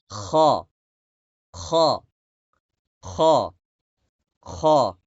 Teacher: হ্যাঁ, তেলতেলে উচ্চারণ করলে হবে না। মানে গলা মরুভূমির মতো শুকিয়ে যাবে, এরকম খড়খড়া।